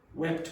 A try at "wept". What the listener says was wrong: Wept. Weep, wept. Wept. You have to pronounce that last consonant. If you say wept, nobody knows what you're talking about. No, that's whip. It's you're crying, maybe because your dog got run over by a bus, for example.